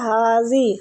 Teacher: ہا کو کھینچیں گے کھڑی زبر کی وجہ سے